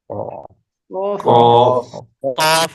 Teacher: کوے کے ساتھ منہ کی طرف اوپر تالو سے لگے تو اس سے قاف نکلتا ہے